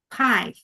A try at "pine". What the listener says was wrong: So it sounds like pie, but we need pine with an N. Pine, pineapple,